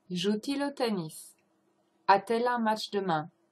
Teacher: But the joue and il, the fact that the verb ends with a vowel and the il starts with a vowel, it's hard to pronounce for French people, so you add a T in between